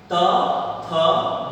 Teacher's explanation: हमारी जीभ हमारे दांत को स्पर्श करती है और वहां पर हमारी प्राणवायु थोड़ी देर के लिए रुकती है और इन ध्वनियों का हम उच्चारण कर पाते हैं। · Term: दंत वर्ण